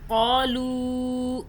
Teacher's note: لو کو ہم نے کھینچا، چھوٹی مدہ آ رہی ہے 3 الف کے برابر، اور یہ واو پھر مدہ ہو رہی ہے، ٹھیک ہے، کیونکہ لام اور واو پیش لو ہوتا ہے۔